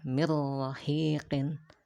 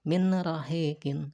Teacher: Makanya kalau nun sukun ketemu dengan huruf ro atau dengan huruf lam, maka dibaca dengan idgham bila gunnah. Digabungkan si nun sukun sama huruf yang setelahnya yaitu ro, akan tetapi tanpa ada dengung sedikit pun.